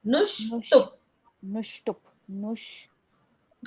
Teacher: नो के बाद आधे श का उच्चारण पहले फिर टू का उच्चारण